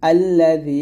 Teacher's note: জিহ্বার আগা সামনের উপরের আগা সঙ্গে লাগিয়ে জাল পাতলা করে উচ্চারণ করবেন